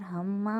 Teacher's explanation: میم مشدد، ایک الف کی مقدار غنہ